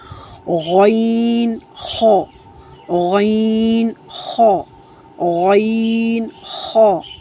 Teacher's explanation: اس کے بعد ہے غین خا، غین خا، غین خا، ان دونوں کو ہم نے موٹی آواز میں پڑھنا ہے اور یہ دونوں حروف حلق کے اوپر والے حصے سے ادا ہوتے ہیں۔ حلق کا اوپر والا حصہ جو ہمارے کوے کے آگے سے شروع ہوتا ہے وہاں سے یہ حروف ادا ہوتے ہیں۔